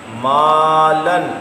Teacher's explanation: کانا، یہ کاف باریک ہے اور نقطوں والا کاف پر ہے، تو جو کاف باریک ہے اس کے آگے الف آئے تو اس کو بھی باریک کر دیں۔ مالن، یہاں الف باریک ہے کیونکہ میم باریک ہے، الف بھی باریک ہے